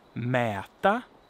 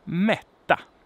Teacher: Mäta, long vowel, short consonant, and mätta, short vowel and long consonant.